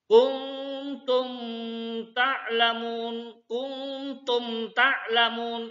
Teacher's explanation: ini itu dinamakan izhar syafawi izhar syafawi ya cara membunyi nya mim sukun disuarakan dengan terang dan jelas tanpa dengung · Kuntum ta'lamun jangan didengungkan, ya, tanpa dengung. Kuntum ta'lamun, tumnya itu jelas. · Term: ijhar sapawi